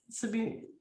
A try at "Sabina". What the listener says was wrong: It's Sabina, and I pronounce it with an A, Sabina, because English doesn't work with a German name.